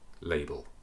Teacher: light at the beginning dark at the end